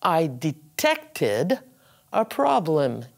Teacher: It has the id sound because it finishes in a T or a D.